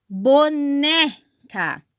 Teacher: paroxítonas pessoal a sílaba tônica é a penúltima